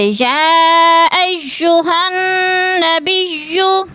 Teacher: तो हा को नून मुशद्दद के साथ मिलाकर पढ़ेंगे, क्योंकि मुशद्दद हर्फ हमेशा अपने से पिछले मुतहर्रिक हर्फ से मिलकर पढ़ा जाता है।